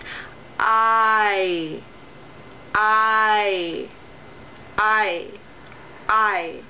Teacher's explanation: Both these vowels are unrounded Your lips are not rounded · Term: diphthong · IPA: [aɪ]